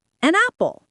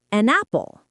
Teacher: We connect the N sound from an directly to the A sound in apple. It becomes an apple. · The consonant sound at the end of the first word attaches itself to the beginning of the second word, as if they are one single longer word.